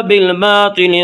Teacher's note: طا کو پر پڑھیں گے، طا حروف مستعلیہ میں سے ہے